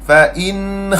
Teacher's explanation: Izhar. Zahirkan jelaskan nun fain. Jelas tanpa dengung.